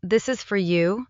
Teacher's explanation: the word for can become very quick and light. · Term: weak forms